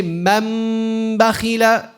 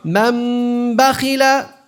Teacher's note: The iqlab is you turn the noon into a meme with the nasalization.